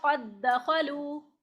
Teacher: इसमें ऐसा नहीं कि हम पहला दाल जो है वो कलकला के साथ पढ़ेंगे, बल्कि इसको पूरी तरह मुदगम कर देंगे अगले वाले में, तो ये पढ़ा जाएगा कत दखलू, यानी ये मुशद्दद पढ़ा गया। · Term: इदगाम सगीर